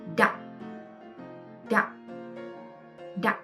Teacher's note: And don't forget to put the tone to this word. This tone is low falling broken tone, the dark tone, and you drop it very fast.